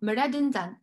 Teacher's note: However, in the trisyllabic form, redenzan, and in the quadrisyllabic form, meredenzan, you did not eat it. So the accent shifts to the penultimate. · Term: accentual mobility